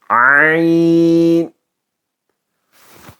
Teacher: یہ نکلے گا مڈل والے حلق سے